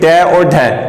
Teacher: इनके उच्चारण में जीभ ऊपर उठकर नीचे मूर्धा को स्पर्श करती हुई नीचे गिरती है, इसलिए इन्हें उत्क्षिप्त व्यंजन कहते